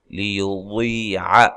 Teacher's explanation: واد کو موٹا ادا کرنا ہے، اور یہ یا مدہ ہے